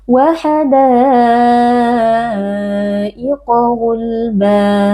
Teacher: alif yang sebelumnya berharokat fathah bertemu dengan hamzah i di dalam satu kata, dibaca panjang 4 atau 5 harokat. Qa huruf tafkhim kita baca dengan mengangkat pangkal lidah. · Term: mad wajib muttasil